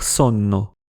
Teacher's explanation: c’est encore plus facile de prononcer un [nː] long que [mn] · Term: assimilation